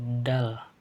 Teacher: huruf dal, yaitu huruf mahrojnya asnani laswi, yaitu antara gigi dan juga gusi. Seperti kita ucapkan yaitu dal, ada bantuan lidah dan juga gigi gitu.